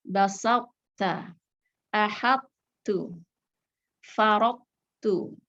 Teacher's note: Dan di sini cara mengidghamkannya hanya dengan mengeluarkan huruf to dari makhrajnya tanpa dikolkolahkan. Kemudian menurunkan pangkal lidah untuk menyebut huruf ta yang dikeluarkan dengan sifat hams. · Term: idgham nakis